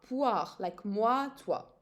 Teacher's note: the OI in French is always, or almost always, pronounced wa